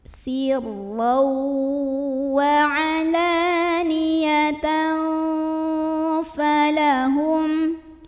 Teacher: tanwin fathahnya dibunyikan samar-samar, mau bilang fa sambil ada dengungannya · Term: ikhfa ausat